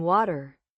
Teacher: the t- sound in water it's softer in American English almost like a d right it's subtle but so important when you know the phones